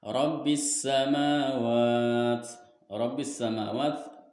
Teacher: huruf ro di sini dibacanya tafhim alias tebal sebab berharokatnya fathah. Terus ada juga alif lam samsiyah sebab alif lam bertemu dengan huruf sin.